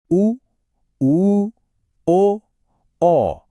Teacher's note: इसमें होठ एक ओ का आकार बनाते हैं। बिल्कुल गोल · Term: वर्तुल